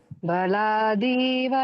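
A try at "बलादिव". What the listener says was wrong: ಎಲ್ಲ ಕರೆಕ್ಟ್ ಆಗಿ ಬಂತು ಅನ್ಕೊಂಡ್ರೆ ಬಲಾದೀವ ಅಂತ. ಬಲಾದೀವ ದೀರ್ಘ ಇಲ್ಲ ದೀಗೆ.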